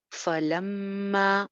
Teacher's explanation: میم شد پہ 1 الف کے برابر غنہ ہو جائے گا